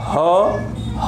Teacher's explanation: जब हम बोलते हैं ह बोलते हैं तो गले से सीधे हवा निकल जाती है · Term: कंठ